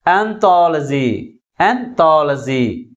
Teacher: Third syllable from the last is pronounced with a greater force comparing with other syllables. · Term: primary stress